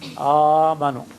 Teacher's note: hamza maftuha followed by hamza sakina becomes ah. Yes, second hamza is dropped and the first hamza, the fatha becomes alif. Amanu. It's compensatory lengthening.